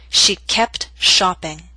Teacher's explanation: in careful speech you would hear the T